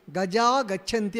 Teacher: విసర్గం ముందు ఆ ఉంది తర్వాత ఏముంది గ వచ్చింది కాబట్టి విసర్గ లోపించి వచ్చి గజా గచ్ఛంతి అవుతుంది